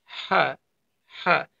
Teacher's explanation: এটা গলার ভিতর থেকে উচ্চারিত হবে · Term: বড় হা